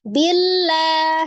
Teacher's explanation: sifat huruf lam Aslinya memang dia tipis tidak termasuk huruf yang tebal ya karena dia juga istifal bukan huruf yang istila jadi diucapkan · ketika berharakat kasrah maka kembali ke hukum aslinya huruf lam dibaca tipis · diucapkan dengan lidahnya tetap terhampar tidak mengangkat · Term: tarqik